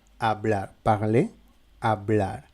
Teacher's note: on ne prononce pas la lettre H normalement si elle est isolée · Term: la lettre H est muette